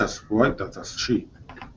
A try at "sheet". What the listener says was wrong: Sheet. There's a T missing there. It should be sheet. Sheet.